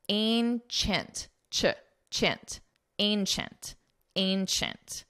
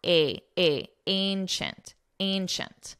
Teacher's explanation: it's a very nasal a sound